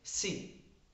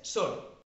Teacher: S+I no suena como en coreano que es 'shi', No, es SI.